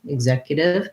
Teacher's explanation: The important thing is that my zek syllable is stressed. If I have a little bit of a U, executive versus executive, it doesn't really matter so much what this vowel says. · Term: second syllable stress